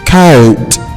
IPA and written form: kəʊt (coat)